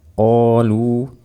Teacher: qafnya seperti yang sudah kita jelaskan dibaca tebal karena dia bersifat isti'la